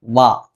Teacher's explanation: പല ആളുകളും ഈ താഴത്തെ ചുണ്ട് മേലത്തെ പല്ലിൽ ഉപയോഗിച്ചുകൊണ്ട് വ ഇങ്ങനെ ഉച്ചരിക്കാറുണ്ട്